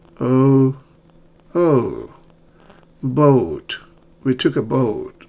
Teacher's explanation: The lips are rounded and your tongue is in the midback.